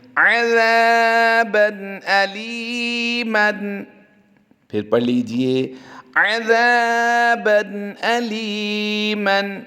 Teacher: الف مدہ کا قاعدہ ہوتا ہے، بعد دو زبر بن کی تنوین کے ساتھ الف ہے، اس کو ہم ہجوں میں نہیں پڑھیں گے، اور اس کے بعد حمزہ حروف حلقی سے آیا ہے، تنوین کے بعد حروف حلقی سے حمزہ آنے کی وجہ سے تنوین میں ہم اظہار کریں گے، یعنی غنہ نہیں کریں گے۔ لام یاز لی پھر یا مدہ ہے، اس کو ہم لمبا کر کے پڑھیں گے، اور میم دو زبر من کی تنوین کو ہم لمبا نہیں کریں گے۔